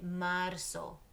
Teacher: The Z in Spanish sounds like an S.